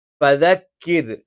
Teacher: മേലെ മുൻപല്ലുകളുടെ അറ്റം താഴെ ചുണ്ടിന്റെ പള്ളഭാഗത്ത് വെച്ചുകൊണ്ടാണ് നമ്മൾ ഫ എന്നുള്ള അക്ഷരം ഉച്ചരിക്കുന്നത്.